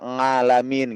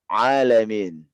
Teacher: Jadi suara a itu adalah keluar dari tenggorokan, bukan dari hidung. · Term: ain